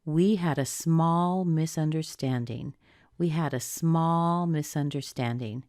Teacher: I stress the word small.